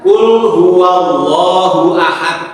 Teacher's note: hu-nya pendek satu harokat